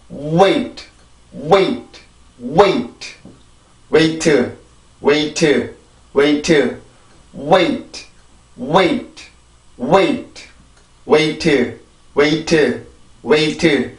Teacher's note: W라는 전이음의 도움을 받아서 내가 이 소리를 왜처럼 바꿔줄 수가 있단 말이에요. 그래서 우리나라보다 이 경우에는 소리가 조금 더 길어요. 어쨌든 간에 우리가 한 번에 발음을 하는 게 아니라 전이음의 도움을 받아서 내가 모음으로 옮겨가기 때문에 그렇죠.